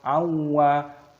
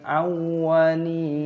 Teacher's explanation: Wawunya tasdid maka dimasukkan, diidghamkan